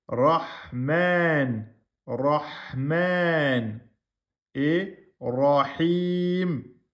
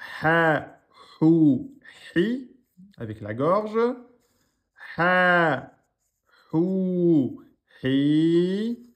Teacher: Cette lettre n'existe pas en français, elle se prononce au niveau du milieu de la gorge. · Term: lettre Ha